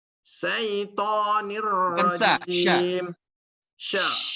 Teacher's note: tafashi, menyebar di mulut. Sifatnya tafashi.